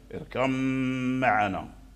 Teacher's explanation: ميم معنا، اركب معنا، فيكون الميم مشددا والباء قد دخلت فيه، الباء قد دخلت في الميم فيكون الميم مشددا، وفيه الغنة اركب معنا، هذا هو الإدغام، والباء مع الميم يخرجان من الشفتين، · الميم فيكون الميم مشددا، وفيه الغنة اركب معنا، هذا هو الإدغام، والباء مع الميم يخرجان من الشفتين، فهما من مخرج واحد من الشفتين